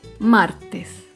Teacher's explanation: Por último, otro ejemplo de palabra grave sin tilde es la palabra martes. Martes se acentúa en la penúltima sílaba, pero no lleva tilde porque termina en S.